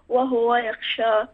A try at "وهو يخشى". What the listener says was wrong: ضم الهاء ، ضم الهاء في وهو يخشى.